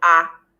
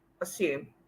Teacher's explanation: The S retains the sound S, okay? The sound S, while the A takes the schwa sound. The sound we call the schwa sound.